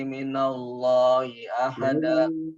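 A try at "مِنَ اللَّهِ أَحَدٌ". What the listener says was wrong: Yujirani minallahi ahad. Kalau mau diperhatikan, bukan ahada. Karena di situ tidak tidak fathatain, bukan.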